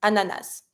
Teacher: some people tend to pronounce the final S, some people don't. Ananas. Personally, I say the S, ananas.